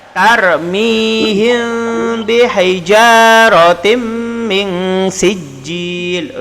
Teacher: Jadi cara bacanya ialah masuk dan dengung. Jadi rotin menjadi rotim. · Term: idham bihunna